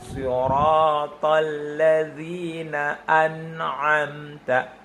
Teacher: Karena lidahnya terlepas duluan. Hukum tajwidnya adalah idhar, harus dibaca jelas, tidak boleh ada proses menahan di situ. Tidak menahan, tidak mendengung atau gunah, tapi dilanjutkan langsung ke makhraj berikutnya dengan kaidah suara yang tetap mengalir tidak berjeda.